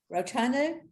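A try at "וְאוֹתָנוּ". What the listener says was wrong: So there's still a V at the beginning. You were perfect until somehow you decided to say that was a resh.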